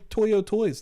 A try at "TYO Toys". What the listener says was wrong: It's TYO Toys, not Toyo. His at is TYOTOYS.